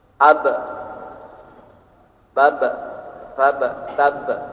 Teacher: huruf ba termasuk huruf yang memiliki sifat qalqalah, yaitu memantulkan suara tambahan